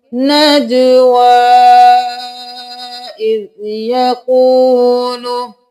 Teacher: یا خالی ہے تو ہم واو کو 4 الف کے برابر کھینچ کر پڑھیں گے